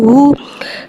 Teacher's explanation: हा को यहाँ भारी अदा करके पढ़ेंगे।